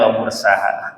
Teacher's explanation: Bacaan imalah. Imalah tuh imalah tuh miring. Bacanya miring, A dibaca E.